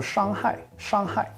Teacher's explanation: it's a first tone the flat one and then it goes down to a fourth